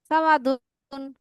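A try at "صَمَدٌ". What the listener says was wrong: সা হয় না আপু, স সমাদুন, সমাদুন।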